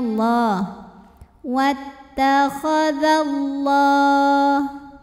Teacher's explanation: lam pada lafaz Allah dibunyikan secara tafkhim, sebab huruf sebelumnya berbaris fathah, maka dibacanya tebal